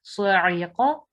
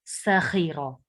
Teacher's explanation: صاعقہ اور سخیرہ میں صاد کی آواز موٹی اور سین کی آواز باریک ہو